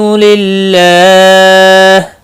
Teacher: اللہ کا لام زیر کی وجہ سے باریک پڑا جائے گا، اس کے اوپر کھڑی زبر بھی ہے، ایک الف کے برابر کھینچ کر پڑھیں گے، اور وقف کی صورت میں ہا ساکن پڑا جائے گا، وقف بالاسکان ہوگا۔